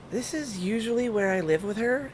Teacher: It's a lot higher and considerably more breathy, but it always feels a little fakey.